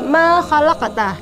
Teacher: Kita pantulkan bacaan huruf kaf karena kaf termasuk dari salah satu dari 5 huruf qalqalah. Kaf, ta, ba, jim dan dal.